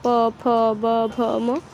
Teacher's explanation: हमारा उच्चारण करते समय ओठ एक साथ आते जैसे प बोलते तो ओठ एक साथ प फ ब भ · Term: प वर्ग, ओष्ठ्याः